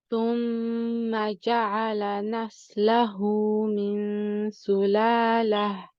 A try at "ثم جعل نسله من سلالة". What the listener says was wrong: Just be careful of the ha at the end. Sulalatin, when we stop, we change this ta marbuta to a ha. This ha is the ha from the bottom of the throat. So we want to be careful we don't squeeze.